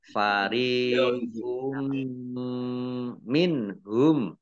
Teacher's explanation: Mendengung mim ditandai mimnya ada tasdidnya. Ya, mimnya dibaca mendengung atau gunnah ditahan 2 harokat